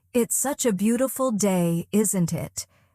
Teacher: Let your tone go up slightly at the end.